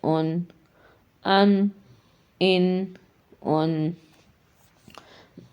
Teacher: سامنے کے دانت چاہے تو 6 کے 6 دانتوں سے پیچھے ہمارے زبان کا جو فرنٹ ہے وہ ان کے پیچھے ٹچ کرنے سے نون ادا ہو، چاہے سامنے کے جو دانت ہیں وہاں سے لے کے انیاب تک ایک سائڈ پہ ہی زبان ٹچ کرنے سے نون وہ ادا ہو جاتا ہے۔